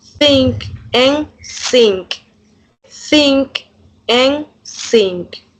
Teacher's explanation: the tongue stays behind the teeth instead of being placed between them, substituting the with s.